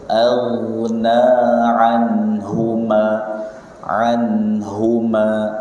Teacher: Tebalkan ya, jangan lupa pangkal lidahnya naik.